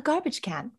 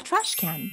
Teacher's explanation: american english again uses set phrase intonation